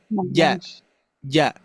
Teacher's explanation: Posisinya di tengah, lidah menempel ke langit-langit. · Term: huruf jim